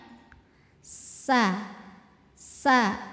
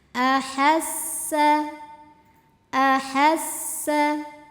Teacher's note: sa sa tipis seperti suara ular s ada desisnya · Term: Sin